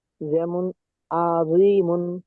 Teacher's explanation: মিমের উপরে দুপেশ তানবিন, তানবিনের আওয়াজ নাকের মধ্যে হয়। মিমের উপর দু পেশ এসছে, একে তানবিন বলে।